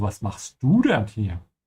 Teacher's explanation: she puts the emphasis on du